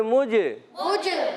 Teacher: جیم حرف قلقلہ سے قلقلہ ہوگا، آواز لوٹ کر آئے گی